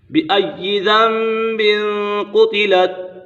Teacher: نون ساکن اور تنوین کو میم سے بدل کر اخفاء کریں گے، یعنی غنہ کر کے پڑھیں گے · تنوین کے بعد قاف حروف اخفاء میں سے ہے تو یہاں اخفاء کا قاعدہ بھی لگ رہا ہے، غنہ ہوگا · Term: اقلاب